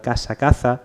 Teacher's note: se revierte el seseo y el ceceo. Yo diferencio de manera natural casa, caza.